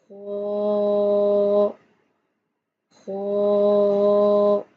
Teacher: خوا جو ہے حروف مستعلیہ ہے، یعنی موٹا حروف ہے. منہ گول کر کے ادا کیا جائے گا.